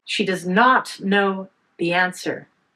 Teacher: Focus on not know and answer. She does and the are unstressed.